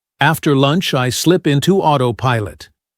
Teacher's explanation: Quick pronunciation drill for autopilot. Stress the first syllable.